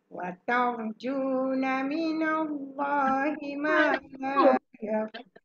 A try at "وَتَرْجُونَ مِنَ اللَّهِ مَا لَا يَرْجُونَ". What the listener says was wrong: Kalau gerak macam tu, itu harakat satu. وَتَرْجُونَ مِنَ اللَّهِ مَا لَا يَرْجُونَ. مَا لَا يَرْجُونَ. Dia jangan tekan mana, dia jadi tinggi. Bila mala satu tu. Mala yarjun. Sumbang.